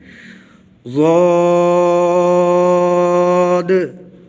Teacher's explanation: زبان کی کروٹ جب دائیں یا بائیں طرف سے اوپر والی 5 داڑھوں سے لگے تو موٹی آواز کے ساتھ ضاد پڑھا جاتا ہے